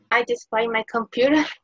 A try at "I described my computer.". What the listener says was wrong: Okay, está bien, pero no está bien porque no oigo el de.